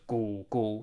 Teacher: the first syllable sounds slightly lower in Pitch than the second